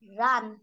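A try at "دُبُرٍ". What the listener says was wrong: রন মোটা আওয়াজে পড়তে হবে, রন, দুবুর রন, দুবুর রন।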